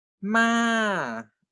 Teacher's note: The falling tone, as you have seen, it starts from 5 and goes to 1. So we write 5, 1.